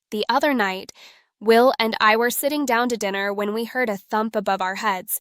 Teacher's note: she learned to stress thump because it conveyed the most important information